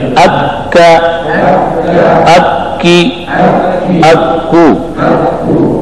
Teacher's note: قاف اور کاف کو حروف لہاتیہ کہا جاتا ہے، اس لیے یہ لہات کے قریب ادا ہوتے ہیں